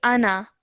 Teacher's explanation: do not stretch the na out for more than 1 second